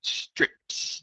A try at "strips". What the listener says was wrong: Strips. Yeah, don't forget the first S there, strip.